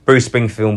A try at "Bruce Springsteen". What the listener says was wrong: You should say his name right. Bruce Springform. Is that what you said?